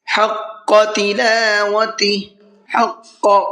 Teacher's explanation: قاف کو پر کر کے پڑھنا ہے